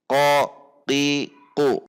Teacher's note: qof di sini memiliki makhraj yang sangat dekat dengan kaf, bukan dekat dengan kho, jadi tidak dibaca qi, tetapi dibaca qoi, qui, qi, bukan ke arah belakang, tetapi sangat dekat dengan kaf.